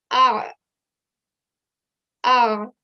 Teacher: make sure to give that sound from the middle of the throat for the ayn